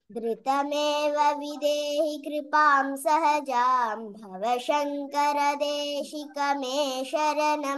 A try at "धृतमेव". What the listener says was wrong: You have a tendency to say dhritameva, and it's a very common mistake. Many people do this. Dhr versus dhru. Okay, this is dhruta, like dhruva, right? Dhruta, dhrutameva.